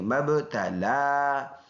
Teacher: اور با میں قلقلہ کریں گے، آواز مڑ کے آئے گی، لام کے اوپر کڑی زبر ایک الف کے اندازے سے لمبا کریں گے · اور میم اور با کو ملائیں گے اور با میں قلقلہ کریں گے، آواز مڑ کے آئے گی